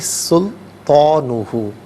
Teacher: سبق سناتے ہوئے 1-2 کالر نے سین کو پر پڑھا تھا، تو سین کو باریک پڑھیں گے